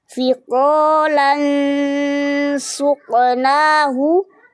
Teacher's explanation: ada qalqalah sughra memantulnya ringan